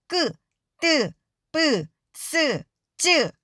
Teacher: 입술을 양옆으로 잔뜩 버린 후에 목에 힘을 주어서 소리를 내야 해요 소리가 울리거나 바람이 세는 소리가 아니랍니다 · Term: 된 소리